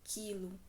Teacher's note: na palavra quilo eu pronuncio só o i quilo o u não tá sendo pronunciado